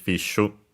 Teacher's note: The accent for fish is on the fi, like in English